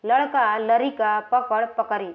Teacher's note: और कभी ड़ ध्वनि भी र हो जाती है।